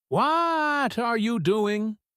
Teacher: she stretches out the word what and yells it. "What are you doing?" The emotion has grabbed the first word and squeezed all the air out of it.